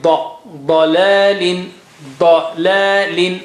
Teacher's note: ض is very thick and high.